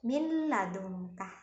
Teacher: nun sukun bertemu dengan lam, memasukkan huruf nun kepada lam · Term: idgham